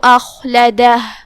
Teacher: کلمت اخلدہ میں یہاں حرف الخاء ہے، خاء کی ادائیگی حلق کے اوپر والے حصے سے ہے، خاء حروف التفخیم میں سے بھی ہے، تو ہم اسے بھاری آواز میں پڑھیں گے. لام پہ اور دال پہ زبر ہے، لہذا یہ حرکات کا دھیان رہے.